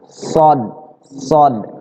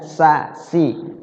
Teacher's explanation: huruf Shad itu adalah huruf yang bersumber keluarnya itu dari lidah ujung lidah menyentuh gigi seri bagian atas